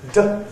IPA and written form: də (do)